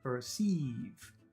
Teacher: First one is short, per. Second one is very long, sieves, perceives.